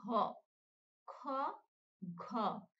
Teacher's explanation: খ, ঘ এই দুটো উচ্চারণ করতেছি তখন কিন্তু মুখ থেকে বেশি বাতাস বের হচ্ছে